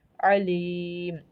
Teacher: عین ہمارا جو ہے وہ وسط حلق سے ادا ہوتا ہے